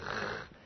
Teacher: Ça va se prononcer rrr, les deux vont se prononcer pareil. Donc le chet et le kaf fricatif vont se prononcer pareil, ha, dans les deux cas.